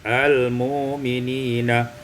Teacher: ibdal hamzati wawan, ditukar hamzah dengan waw maka menjadi al-mu'minina.